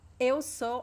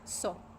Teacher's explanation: We usually pronounce just so, because we speak fast, right? So you cannot hear the second vowel.